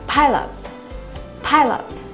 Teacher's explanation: Các bạn nhớ nối âm ở từ này nhé, chứ đừng đọc riêng rẽ hai từ là pile và up